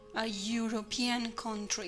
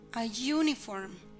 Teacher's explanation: Por ejemplo, cuando la vocal produce un sonido como de Y, por ejemplo, en a European country, esa E después del artículo tiene sonido de Y, suena como you, a European country, como una Y muy suavecita.